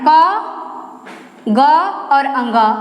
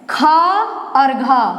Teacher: ये ख को बोलने में इसके बोलने के अपेक्षा क को बोलने के अपेक्षा ख बोलने में ज्यादा श्वास लग रही है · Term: महाप्राण